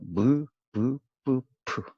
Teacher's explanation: 자, 자, 여기 맨 먼저 나오는 게 입술 소리인데, 입술 소리. 두 입술 사이에서 나오는 소리예요. 위치가 두 입술. 그래서 무, 부, 뿌, 푸.